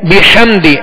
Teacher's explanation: ہا کی آواز کو حلق سے درمیانے حلق سے ادا کریں گے اور واضح کریں گے. بحمدی ہا اس کو بھی درمیانے حلق سے واضح ادا کریں گے.